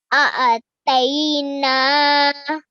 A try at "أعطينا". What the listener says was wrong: طي. Okay, at the moment you're saying they. So I want you to say طي. أعطينا.